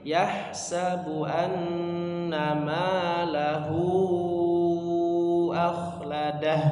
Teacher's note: lahunya lebih panjang sedikit, lebih panjang dari ma-nya ya